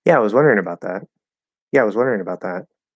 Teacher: as I drop the tongue down to go to ah, kind of like hit that schwa first and then go into I.